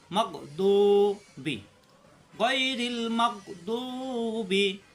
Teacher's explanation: দু জিব্বার গোড়ার কিনারা উপরের মারি দাঁতের গোড়ায়